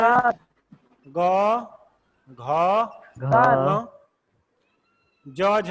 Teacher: इन व्यंजनों के बोलने में स्वर यंत्र में कंपन होता है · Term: घोष व्यंजन